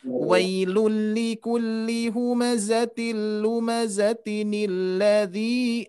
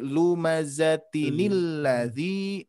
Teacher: ketika kita wasolkan dari ayat 1 ke 2, baru nun kecil ini fungsinya untuk dibaca kasroh nih menjadi ni ya.